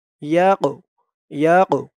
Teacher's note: হামজা ইয়া জবর আই, ইয়া দিয়ে আবার কফ ধরবে। এই কফটা হচ্ছে কলকলার হরফ, ধাক্কা দিয়ে পড়তে হবে। আই, ইয়াক, ইয়াক, এরকম ধাক্কা হবে।